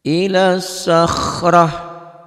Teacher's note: Tak marbutoh jika dihentikan bunyinya berubah menjadi ha.